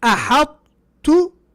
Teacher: The difference is that أحطت, there's no qalqala, which would have been there. So we've sacrificed the qalqala.